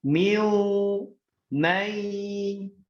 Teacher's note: Karena dia bentuknya idgham bi gunnah ditambahkan ya, ditahan di hidung.